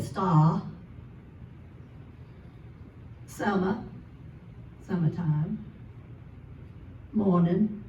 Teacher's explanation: You don't hear the R anywhere, it's gone. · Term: dropped the R